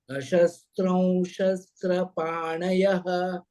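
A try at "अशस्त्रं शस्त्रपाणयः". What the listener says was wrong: Shash is not the word. So, shas. Not shash. Shas. Shastra.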